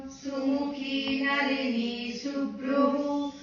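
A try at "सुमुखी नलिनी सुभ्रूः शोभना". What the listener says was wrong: Don't split it there, because splitting I told only this Visarga Sandhi comes there as ish. So Sumukhi Nalini Subhru Shobhana Suranayika.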